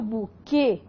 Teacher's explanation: é uma oxítona que tem a pronúncia fechada. Nós temos um dígrafo, o Q e o U não tem pronúncia, e esse E está indicando para você que a vogal é fechada, então a pronúncia é fechada. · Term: E fechado